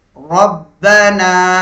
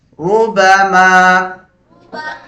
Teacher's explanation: ராவுக்கு மேல தம்மா வரும்போது அல்லது தம்மத்தை வரும்போது ராவை ராவுடைய சப்தத்தை வல்லினமாக ஓத வேண்டும் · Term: தஃப்ஹீம்